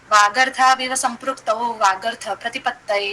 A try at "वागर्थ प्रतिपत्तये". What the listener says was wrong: जाओ, वागर्थ प्रतिपत्तये सॉफ्ट क्यों बोला? वागर्थ प्रतिपत्तये ऐसे बोल।